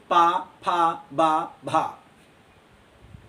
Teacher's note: पावर्ग आपका ओष्ठ है। हमारे दोनों होंठ आपस में चिपकेंगे